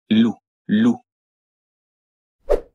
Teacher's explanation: the French one only uses the front of the tongue you the tip of your tongue should touch just behind your front teeth